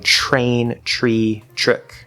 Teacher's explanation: Notice I'm saying ch. It's a CH sound.